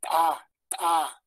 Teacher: Detenemos el aire en la T y luego lo soltamos en la ta, ta